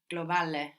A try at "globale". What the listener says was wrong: Globale. Good.